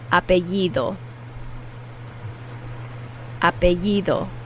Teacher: the D is a soft D, so it's like the TH sound in English